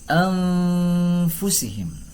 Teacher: Maka kaidahnya, hukum tajwidnya disebut dengan ikhfa harfi. Apabila ada nun sukun bertemu fa, maka dibaca secara samar-samar dan didengungkan dua harokat atau dua ketukan.